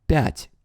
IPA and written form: pʲætʲ (пять)